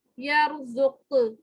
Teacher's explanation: وقف میں جو ہے یہ جو قاف ہے آخری والا حرف, یہ ساکن ہو جاتا ہے اور اس کے اوپر اس میں پھر ہم قلقلہ کریں گے